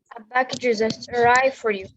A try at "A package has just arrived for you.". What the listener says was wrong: Listen to the A. هي بتضغط على stress على Yeah, she stressed على ال A.